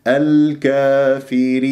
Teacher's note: ولا تجر غنة في الياء، اخفض الفك السفلي فيها ونون مظهرة